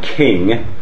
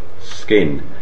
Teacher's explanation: So we say king, but we say skin. And the k there, after the fricative, that is to say that the sibilant fricative, is unaspirated